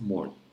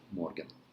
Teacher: Most Norwegian pronounce morgen as morn, not like in German, morgen.